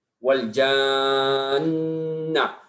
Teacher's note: Nun mati bertemu dengan nun yang berharakat. Jadi ya hukumnya harus didengungkan ya. Jadi itu yang disebut dengan syaddah.